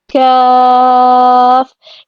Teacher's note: یہ ادا ہوگا جب زبان کی جڑ نرم تالو سے ذرا آگے سخت تالو کے ساتھ لگے گی